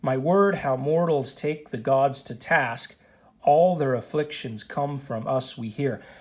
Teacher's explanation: 5-foot line where each foot has an unstressed syllable followed by a stressed syllable. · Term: iambic pentameter